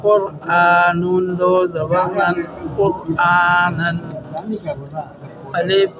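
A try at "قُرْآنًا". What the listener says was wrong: الف نہیں، الف نہیں،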